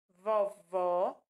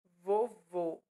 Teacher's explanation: tem um som aberto e o acento circunflexo indica que o som é fechado